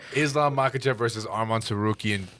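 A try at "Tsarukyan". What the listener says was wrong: To Sarukian. There's a T there, going to pronounce the T.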